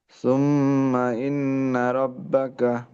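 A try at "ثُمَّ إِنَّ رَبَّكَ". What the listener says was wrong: ইন্নার মধ্যে লম্বার মতো শোনা যায় হালকা, লম্বা নাই, গুণনা হবে। সুম্মা ইন্না রাব্বাকা।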